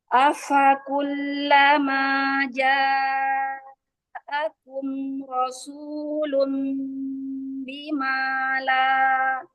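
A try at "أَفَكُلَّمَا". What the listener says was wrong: Fakullama, tahan lagi lam tasdid, lam sukunnya tahan sebentar ya. Jangan langsung terburu-buru.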